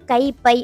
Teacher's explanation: கை பை அப்படின்னு நீங்க தனியா எடுத்துக்கிட்டீங்க அப்படின்னா அதோட மாத்திரை அளவு ரெண்டா இருக்கு